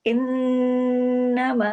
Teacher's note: नून पे तशदीद है, डबल नून है, बड़ा गुन्ना होगा , इन्नमा वलियुकुमुल्लाहु, वलियु सख्ती से जोड़ना है, कुमुल्लाहु व रसूलुहु,